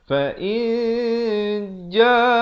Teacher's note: Tapi bila datang jim disamarkan. Ikhfa maksudnya samar ataupun disembunyikan bunyi nun di antara huruf jim. Maksudnya nun pun tidak, jim pun tidak, dengan kadar dua harakat.